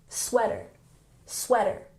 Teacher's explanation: make sure you're emphasizing the first syllable, sweater, sweater